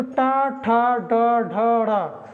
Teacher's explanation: ट मतलब तालु से थोड़ा सा अंदर घुसी और कंठ से थोड़ा सा पहले, उसको हम कहते हैं मूर्धा। तो टा ठा ड ढ ढ़, मतलब आप बोल के देखिए आपकी जीभ जा कहाँ रही है, तो उसी को हम कहते हैं मूर्धा।